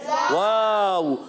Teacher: होठों की गोलाई से अदा होता है वाव